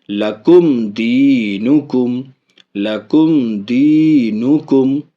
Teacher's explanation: میم ساکن کے بعد دال ہے، اس لیے یہاں بھی میم کا اظہار